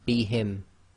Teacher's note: if you have a n s followed by the letter ba we're going to change the sound of the N into a m